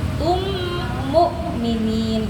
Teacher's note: Mim itu kan dia suaranya dari hidung ya. Ketemu hamzah yang bukan dari hidung. Jangan sampai a-nya jadi ain ke bawa dari mimnya.